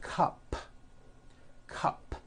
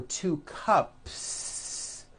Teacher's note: add an S to the word cup to make it plural the S you add also remains unvoiced